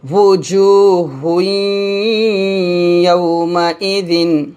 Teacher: এখন তানবিনের পর ইয়া আসছে, তো এই দুই পেশ আসছে, আমরা একটা পেশ ইয়ার সাথে মিলাবো, গুণনা করবো।